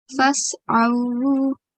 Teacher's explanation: the ayn sound comes from middle of the throat